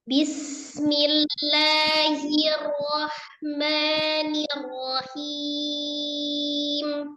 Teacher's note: Jadi jangan memanjangkan ba-nya. Kasrohnya tetap disempurnakan bi.